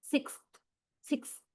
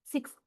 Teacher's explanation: Even before you go to the last consonant that is the, don't you feel your tongue already touches the upper teeth? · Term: dentalized